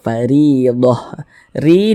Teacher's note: huruf ro dibaca tipis baca tarkik